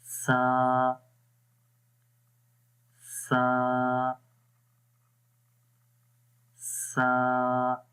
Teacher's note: Soft आवाज हो रहेगी इसके अंदर और इस जुबान की नोक ऊपर वाले दांतों के यानी सनाया उलिया के किनारों पर लगेगी। · तो यहाँ पर इमेज में आपको वाज़ेह तौर पर नज़र आ रहा है कि ये ज़ुबान की नोक सनाया उलिया ऊपर वाले जो दो दांत हैं उनके किनारों पर लग रही है